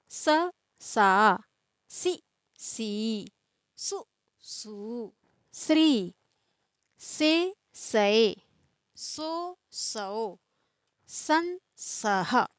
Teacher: इस स का उच्चारण दांत से होता है इसीलिए इसको दंती सकार बोलते हैं